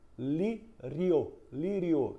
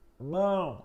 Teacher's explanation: Aí nasalizou. Então, quando ditongo é nasal, é esse para o qual a gente precisa da liberação do ar também pelo nariz